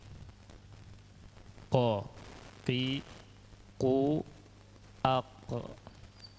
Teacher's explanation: di pangkal lidah, posisinya nempel di langit-langit atas bagian yang lunak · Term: makhraj qaf